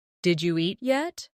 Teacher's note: Did you eat yet? When spoken quickly, it sounds like Jeet yet. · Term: connected speech